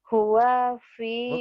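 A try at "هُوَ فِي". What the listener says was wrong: Bukan. Tekanannya bukan gitu nih ya. Huwa fi, huwa fi gitu tekanannya.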